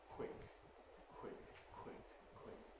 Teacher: In the case of quick, the aspiration happens during the W sound. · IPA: [kw̥ɪk]